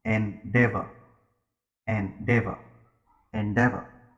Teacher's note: There are three syllables. The stress is on the second sound.